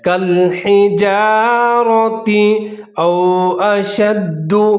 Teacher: آگے را کو موٹا کر کے پڑھنا ہے، را کے اوپر زبر ہے۔ کالحجارۃ او اشد، او یہاں پر واو ساکن اور اس سے پہلے حمزہ دونوں کو ملا کر پڑھنا ہے اور جہاں پر آپ نے ہونٹ گول کر لینے ہیں۔